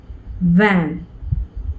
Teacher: V as in van was a labiodental consonant because it involved the lower lip and the upper row of teeth.